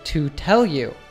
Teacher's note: it's important to know that to is pronounced with a schwa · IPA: /ə/